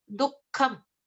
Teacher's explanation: So there is an emphasis on the k syllable at that point.